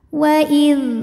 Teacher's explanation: dalal itu suaranya rakhaah mengalir ya jangan juga sampai jadi syidah